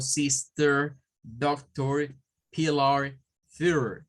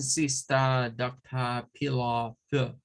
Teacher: Las terminaciones con la R, vea, en inglés norteamericano o inglés que explicamos, es inglés rótico, donde la R suena, sonaría como sister, doctor, pillar, third. · Pero los británicos vienen y ahí cambian esas terminaciones por un schwa. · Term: inglés no rótico